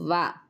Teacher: దంతములు ఓష్టములు స్థానములుగా గల అక్షరమునకు దంతోష్టములు అని పేరు